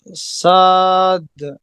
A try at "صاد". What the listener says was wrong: make it heavy صاد